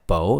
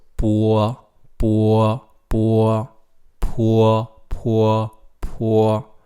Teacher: doesn't sound like Bo it's poor you have to say Oh first and then slide into a are